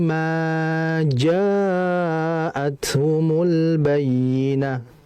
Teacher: mimnya jangan dibaca lebih dari dua karena takaran dia hanya dua saja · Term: mad asli